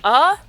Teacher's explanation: capital v or uh is very relaxed in an open sound